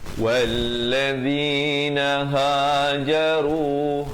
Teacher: ha di pangkal kerongkong 2 harakat. Jaru, hajaru 2 harakat runya.